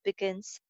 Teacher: G sound ko thoda sa k mein change kar diya jayega